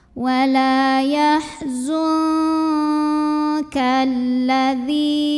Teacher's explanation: Berikutnya di sini ada hukum ikhfa ab'ad karena ada nun sukun yang bertemu dengan huruf kaf. Maka cara baca nun sukunnya samar-samar, jadi tidak jelas n-nya. Siap-siap mau bilang kaf disertai dengungan.